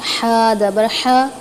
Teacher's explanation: حلق کے درمیانی حصے سے ادا ہوتا ہے ہا، اور جب ہم اس کو ادا کرتے ہیں تو ہلکی سیٹی کی آواز نکلتی ہے